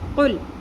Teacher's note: اعوذ، قل اعوذ، قل، یہاں پہ ایک چیز کا خیال کرنا ہے کہ لام کے اوپر قلقلہ نہیں ہے، لام کا مخرج اپنی جگہ سے ہلنا نہیں چاہیے